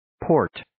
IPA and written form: poʊrt (Port)